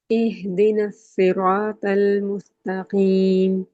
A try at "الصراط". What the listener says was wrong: بہتر، صراط تو کو اور ہیوی کریے، صراط